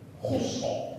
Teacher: Terangkat sebagian besar daripada pangkal lidah ke langit-langit mengakibatkan bacaannya ditebalkan. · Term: huruf al-isti'la